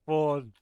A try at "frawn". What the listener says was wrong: I don't say fawn because there's an R. It's frawn. You didn't pronounce the R, you dipshit.